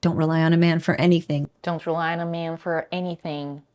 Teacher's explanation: the article a and the preposition for are reduced to a and for don't rely on a man for anything